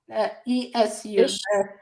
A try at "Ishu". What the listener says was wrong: Yeah, in the audio book, they pronounced it issue, like ish. Like With the SH.